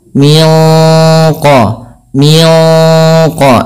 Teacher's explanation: suara nunnya ya disamarkan langsung kepada makhraj daripada huruf qof